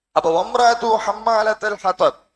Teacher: ஹத்வப் பாவுல முடியும் போது கல்கலா அழுத்தி நிறுத்த வேண்டும்